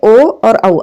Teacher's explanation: कंठ प्लस मतलब गला और ओठ से जो बोले जाते हैं ओ और औ, आप बोल के देख लो, इसमें होठों का प्रयोग हो रहा है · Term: कंठोष्ठ